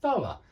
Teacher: so that's a voiceless th at the start here